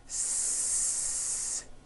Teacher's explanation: the S consonant made with air going through your front teeth s any voicing going on with the sound no the s